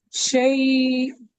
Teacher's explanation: حمزہ متحرک تھا، مضموم تھا، مضمومتین تھے اس پہ، ہم نے اسے ساکن کیا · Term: وقف بالإسكان